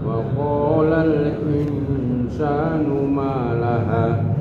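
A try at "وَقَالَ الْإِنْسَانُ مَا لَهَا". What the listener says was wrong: Ma sama hanya nggak sama panjangnya. Yang mungkin yang satu 2 harakat, ma-nya yang ha-nya ini nggak nyampe 2 harakat. Nih, malaha.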